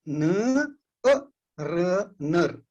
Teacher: न और र के बीच में जो अ की ध्वनि है वो बड़ी ह्रस्व है।